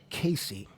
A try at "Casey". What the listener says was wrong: it was never Case. It was You gotta put the emphasis on it, like